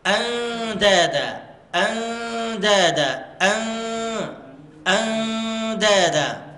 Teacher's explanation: هنا الإخفاء قوي ولكن الغنة مرققة